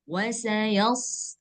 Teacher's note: Nah, dia nggak perlu hembus, nggak perlu dihembus. Seperti kita mengucapkan huruf sin, hanya saja huruf shad ini dia lebih tebal. Nah, wasayals, nggak ada hembusan.